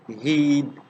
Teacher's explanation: we are saying it in a relatively close and unrounded position it's pronounced in the front part of the vocal tract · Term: long vowel